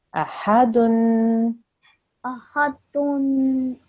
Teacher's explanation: we have to make a stretched nasal sound slightly at the end of the word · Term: tanveen